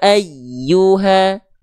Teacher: jangan sampai terputus suara huruf ynya ketika bertasdid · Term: huruf ya bertasydid